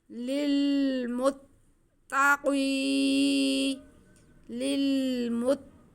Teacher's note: हुदल्लिल मुत्ता, आगे काफ नुक्तों वाला यानी मोटा काफ और उसके नीचे ज़ेर है, आगे या साकिन है, या साकिन से पहले ज़ेर हो तो या मद्दा होती है, तो इसको हम खींच के पढ़ेंगे।